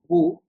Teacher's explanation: by reading the pesh, your lips will be in the rounding shape like boo